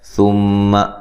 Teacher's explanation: میم مشدد پہ غنہ ضروری ہے، لمبا نہیں کرنا میم کو